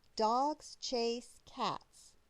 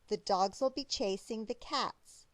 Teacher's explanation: We keep adding syllables each time we say the sentence, but each sentence takes just about the same amount of time to say as the shorter one before it. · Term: rhythm